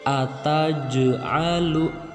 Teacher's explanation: jimnya huruf ja-nya dibaca memantul gitu menjadi ataj'alu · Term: qalqalah sugro